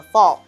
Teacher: ALL makes our jaw relaxed, and we have the ah sound, followed by the LL makes a fall sound.